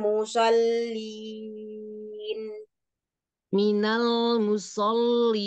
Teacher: ketika kasrah e bibirnya jangan ke samping tetap e turunkan rahangnya aja